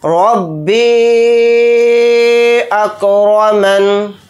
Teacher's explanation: इस तरह से हम इस मद को खींचकर पढ़ेंगे, रब्बी अकरमन। रा को यहाँ पर मोटा पढ़ेंगे यानी पुर क्योंकि रा के ऊपर ज़बर है। यहाँ पर नून के नीचे ज़ेर है तो ज़ेर नहीं पढ़ेंगे क्योंकि यहाँ पर आयत हो रही है।